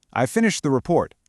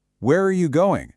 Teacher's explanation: Listen to how my pitch drops right at the end of these examples. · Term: falling intonation